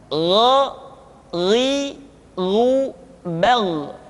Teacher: yaitu diucapkan dari pangkal tenggorokan kita. Yang membedakannya adalah kha mengalir nafas dan gha tidak mengalir nafas. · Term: huruf gha